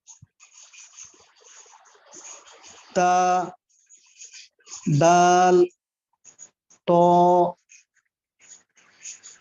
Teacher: মাশাআল্লাহ, তারপর 11 নম্বর মাকরাজ জিহ্বার আগা উপরের পাটির সামনের দুই দাঁতের গোড়ার সাথে লাগিয়ে